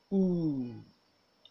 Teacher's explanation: This is also a long vowel. It is a back, closed, tense, and rounded vowel. The lips are forward but flattish as if to whistle. Okay, and there is a slight opening between them. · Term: ooh sound